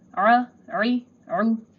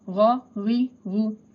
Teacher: Ain will be pronounced from middle throat and ghain will be pronounced from the upper throat.